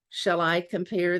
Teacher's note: the second syllable is stressed in each of the feet which are groups of syllables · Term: iambic pentameter